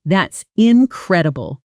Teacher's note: the pitch of your voice should rise sharply on the stressed syllable and then fall almost like a small musical arc. Flat monotone delivery of an exciting sentence like that actually confuses native listeners because your words say excitement but your voice says boredom and the mismatch feels strange.